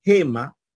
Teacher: en el caso de gema Entonces no está usando el fonema G sino el fonema j